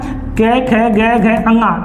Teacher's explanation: ये किससे बोले जाते हैं? कंठ से बोले जाते हैं।